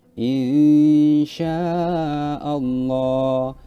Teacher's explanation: Allah ya Yo ada nun sukun yang bertemu dengan mesin Nah kita harus samar-samar membacanya nun sukun itu langsung ke disamarkan ke huruf Sin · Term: ikhfa